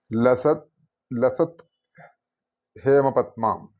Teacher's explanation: ത് പ്ലസ് ഹേ, അപ്പം അത് ഒരുമിച്ച് വരുമ്പോൾ ധേ എന്നുള്ളൊരു ശബ്ദമാണ് വരിക. ആ ദായും ദായും പിന്നെ ധായും അത് ഒരുമിച്ച് ചൊല്ലുമ്പോൾ ശരിക്കും ധേ കണ്ഠം കൊണ്ട് ഉച്ചരിക്കുമ്പോൾ അങ്ങനെയാണ് സംസ്കൃതത്തിൽ ഈ ശ്ലോകങ്ങൾ എഴുതപ്പെട്ടിട്ടുള്ളത്.